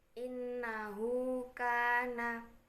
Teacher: maka cara membacanya dibaca 1 alif atau 2 harokat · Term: mat silah qasiroh